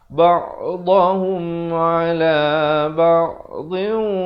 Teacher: Ha baris dhammah bunyi hu, bukan bunyi ho. Jadi bila bunyi hu, bila bertemu mim jadi hum, bukan ba'dahum.